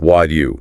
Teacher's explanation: What do you collapses. The T sound is often lost, and it merges into a sound like wad you